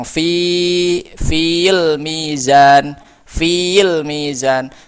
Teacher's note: Kemana ya-nya? Nah, ya-nya dihadzaf, dibuang karena pertemuan dua sukun.